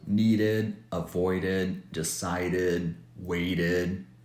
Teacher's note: if a word ends in D or T, the ED is pronounced as id and as a separate syllable